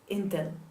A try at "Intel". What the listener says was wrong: Intel? This is actually not a schwa. It's not a schwa. It's an exception. So this is Intel. Intel. Exactly how it's written. Intel, it's Intel. Why? Why? Because it's short for in telephone or in telecommunications. So it's not really the last syllable of a word.